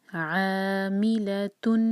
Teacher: مد طبعی 2 حرکہ اور حلق سے نکالیں گے عین کو